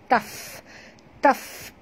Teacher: Ketap gigi atas ke bibir bawah. Keluar angin. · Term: hamas